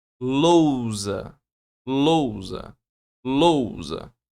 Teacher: U, semivogal. O som do U é mais baixo.